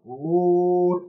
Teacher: إذن حس كأنه عم تبلع شيء وانزعاج، تنزعج في المخرج، لا يعلمون. هذه مون، هذه واو انحسرت ما بين الميم والنون، والميم والنون في مخرجهما الغنة من الخيشوم، فممكن أن تتأثر هذه الواو